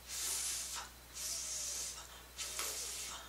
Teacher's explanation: the teeth on the top of your bottom lip okay so when we're making the f sound it's gonna go you're blowing air okay i don't feel the vibration because it's unvoiced